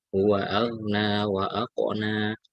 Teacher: Jadi ghain ya sukun, tidak berqalqalah, tidak dipantulkan bacanya